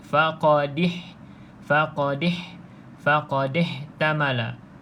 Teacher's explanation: Faqadih tamala itu imalah, iaitu dia condongkan bunyi dal baris bawah.